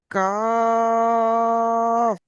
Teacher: জীবের গোড়া হইতে একটু আগে বেড়ে তার বরাবর উপরে তালুর সঙ্গে লাগিয়ে উচ্চারণ হয় কাফ।